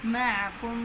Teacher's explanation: میم مشدد ہے یہاں پہ غنہ کریں گے ، اور میم ساکن کا میم میں ادغام ہو رہا ہے،